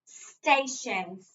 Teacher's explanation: accent is on the first syllable